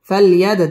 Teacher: দাল কলকলার হরফ ধাক্কা দিয়ে পড়তে হবে